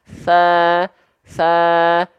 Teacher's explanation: tsa dan dalal makhrajnya keluar dari apa w waluilulya min thofaihima huruf tsa huruf dalal dilafalkan ujung lidah cukup nempel ke ujung gigi Sari atas kita tipis-tipis